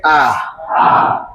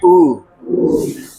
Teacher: पश्च स्वर में जिनके उच्चारण में जीभ का पिछला भाग सक्रिय रहे।